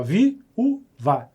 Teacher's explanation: Então isso é um hiato. Repetindo, é uma vogal em cada sílaba. Você separa as vogais.